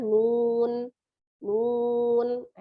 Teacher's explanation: nunnya disukunkan nun ya, dengan memonyongkan bibir ya, karena dia dhammah